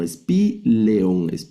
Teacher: este diptongo alfa yota se debe pronunciar como e, como e.